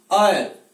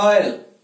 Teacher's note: आ तथा ओ के बीच में इसका उच्चारण होता है